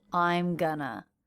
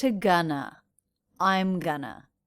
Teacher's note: they have contracted I am and also reduced going to gonna. I'm gonna. Notice how I'm is the most stressed syllable in that fragment.